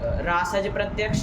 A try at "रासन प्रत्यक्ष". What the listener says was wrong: रासज नहीं, रासन। वो राशन नहीं होता एक, वो नहीं है राशन, वो तो बढ़ता है जो, है कि नहीं? यहाँ दंत्य से है रासन प्रत्यक्ष।